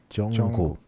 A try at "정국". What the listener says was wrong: 예, yeah, so it's not 정국 because it sounds like a K cook, so 정국. Yeah, 정국. K.